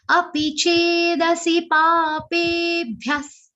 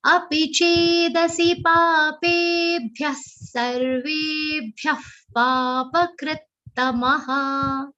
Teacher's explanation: Pape is a long sound and it will have a stress or aghat of bha.